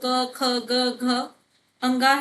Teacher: हमारे तीसरा, चौथा, पांचवा सघोष होते हैं या घोष होते हैं।